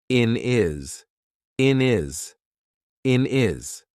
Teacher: So, for example, here instead of saying in his, we're probably going to say in is in is in is. We've taken away that H completely and we've made it into one word.